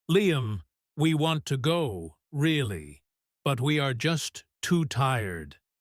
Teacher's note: The emphasis on want softens the no.